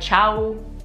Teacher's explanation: I know if someone's Italian, because when they say ciao to me, they're like ciao. I know it seems ridiculous to hold the ooh out at the end, but that really does make a big difference.